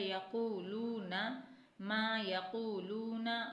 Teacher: یا کو نہیں کھینچنا، قوف اور لام کو تھوڑا کھینچنا ہے کیونکہ واو مدہ بن رہا ہے